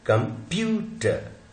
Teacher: जो स्ट्रेस है वो प पे है.